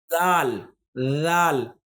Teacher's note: تو اس کو پڑھنا بھی بہت ہی آسان ہے، اور وہ یہ ہے کہ اس کو جب ادا کرتے ہیں ہم لوگ تو اپنی جو زبان ہے، زبان کی نوک جو ہے وہ دانتوں سے تھوڑا باہر کی طرف نکالیں گے